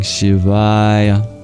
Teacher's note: there are long and short vowels in Sanskrit. The A in Aya is long